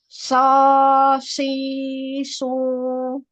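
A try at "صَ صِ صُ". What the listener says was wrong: Masih makhrajnya masih di bibir. Jadi dia keluar itu melalui bibir yang bagian basah ini, terserempet oleh apa namanya udara ya, suaranya ini tadi. Jadi tebalnya di situ.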